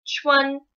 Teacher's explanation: Chuan is what's called first tone, which means you kind of like, if you were singing, you like stay on the same note. You hold a note.